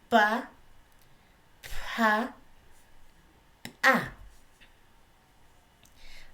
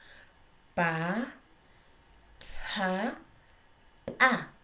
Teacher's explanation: La pronunciación bilabial es el aire que viene de la laringe, se obstruye en los labios. Sale y se obstruye en los labios y luego deja pasar el aire.